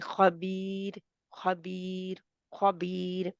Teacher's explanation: पर वक्फ करेंगे जैसे खबीर खबीर खबीर ख्वाब तो मोटा रहेगा लेकिन बीर जो है वो बारीक रहेगी रा